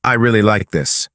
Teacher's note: with stress on really, it shows excitement · If you say, I really like this, with stress on like, it sounds more sincere. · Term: word stress